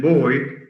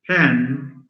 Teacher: B as in boy is voiced. P as in pen is voiceless.